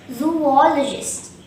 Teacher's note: The second syllable all is stressed and there is one schwa in this word.